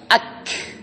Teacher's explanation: Ingat huruf kaf dan ta. Putusin dulu suara, kemudian ada angin yang keluar. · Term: Hams